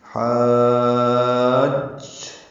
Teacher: ہا الف مدہ ہے اور جیم پر تشدید آنے کی وجہ سے مد آئی ہے. حاج یعنی لمبا کر کے جیم سے ملانا ہے اور جیم کی آواز کو روکنا ہے 2 حرکات، تب یہ مد پوری ہوگی. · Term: مد لازم کلمی مثقل